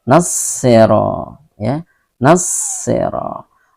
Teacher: Ra dibaca dengan tebal karena dia berbaris fathah, ya. Tafkhim, ya, dibaca dengan ketentuan dua harakat, ya. · alif lam ini seolah-olah tidak dibaca karena dia sudah dileburkan ke dalam huruf sod, ya. Arti idgham itu dileburkan, ya. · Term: alif lam syamsiyah